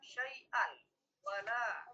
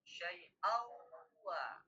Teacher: Tanwin bertemu dengan waw, maka dileburlah suara tanwin ini ke dalam waw. Syai'aw wa. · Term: idgham bi gunah